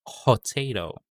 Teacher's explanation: There's an H sound after the P sound.